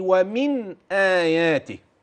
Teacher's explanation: حينما أوضحنا النون وبيناها في ومن آياته، ستجد أن النون ذلقية، وأن الهمز حلقية، فبعد المخرج أدى للبيان